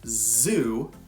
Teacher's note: your mouth should be in the exact same position that it is for s but make your vocal cords vibrate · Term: Z sound